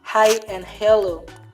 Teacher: The sound H, as in hi or hello, is voiceless and also usually included in the set of fricatives.